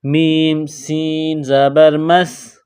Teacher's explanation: اور سین کو آپس میں ملائیں گے جزم کی وجہ سے، سین کو پتلا پڑھیں گے اور سین میں سیٹی کی آواز پیدا کریں گے